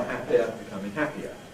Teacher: This is the tensing of the short I.